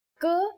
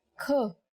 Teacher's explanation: k is a consonant, and when we say it with aspiration, it becomes another consonant kh